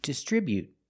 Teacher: With the T at the end, after the vowel, you can make a stop T sound.